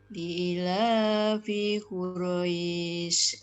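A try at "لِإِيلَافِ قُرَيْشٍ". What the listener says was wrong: Bentar Bu, i sama la panjangnya sama. Dua ketuk. Coba diulang.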